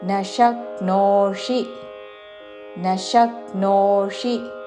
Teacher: శక్నోషి చివరిలో మూర్ధన్య షి హ్రస్వము